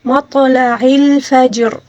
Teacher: جیم کے اوپر جو ساکن ہے اس کو بھی ہلا کر پڑھیں گے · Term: قلقلے والا حرف, قلقلے